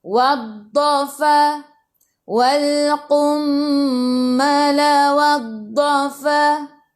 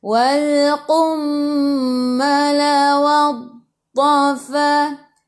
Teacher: Bila istitalah, kita kena tarik untuk huruf dad ni. Sebab bukan panjangkan harakat, panjangkan huruf tu, sifat huruf tu, istitalah.